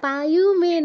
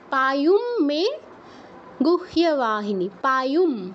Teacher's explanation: অনুসারের জায়গায় ময় হসন্ত, তারপর মে